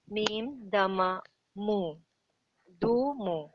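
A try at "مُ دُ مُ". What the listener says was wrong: good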